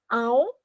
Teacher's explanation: ele passa ão pelas minhas vias nasais, então ele é um ditongo decrescente nasal